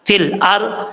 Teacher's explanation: रा साकिन से पहले जबर है, रापुर पढ़ेंगे, बरीक नहीं पढ़ेंगे।